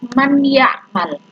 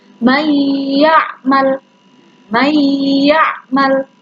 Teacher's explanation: idgham memasukkan bihunna dengan dengung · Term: idgham bihunna